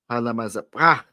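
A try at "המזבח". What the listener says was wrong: There's no la in there. Hamazabach.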